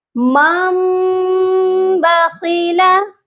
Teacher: اس کے معنی ہیں بدلنا، یعنی اگر نون ساکن اور تنوین کے بعد حروف با ہو تو نون ساکن کو اور تنوین کو میم میں بدل دیتے ہیں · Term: اقلاب